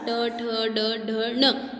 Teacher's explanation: हम मूर्धा के द्वारा ट ठ ड ढ ण यह बोल सकते हैं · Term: मूर्धन्य